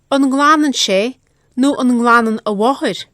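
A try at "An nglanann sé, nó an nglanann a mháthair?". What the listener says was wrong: A slight vowel I hear intruding there between ng and l. Nglanan.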